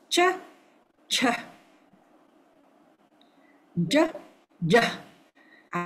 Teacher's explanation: the palatal, the tongue is at the palate, the roof of the palate